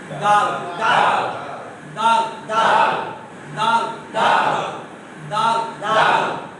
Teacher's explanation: কোথায় থেকে না জিহ্বার অগ্রভাগ উপরে দুই দাঁতের গোড়ায় দাল। দাল জিহ্বা ওখানে বসে থাকবে, ওখান থেকে কি উচ্চারণটা শুরু হবে দাল দাল দাল দাল দাল দাল দাল দাল তা তা ওখান থেকে না দাল দাল।